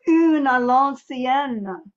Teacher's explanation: ever so slightly prolonging the final nasal